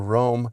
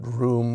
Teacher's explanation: that O sound Rome um eventually moved up into the ooh position during the great vowel shift